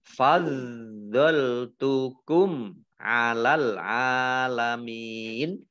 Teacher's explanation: Mim sukun bertemu dengan huruf ain. Bacaan izhar safawi dibaca jelas. Al-alamin, alif lamnya alif lam komariah, ditandai dengan lamnya dibaca sukun.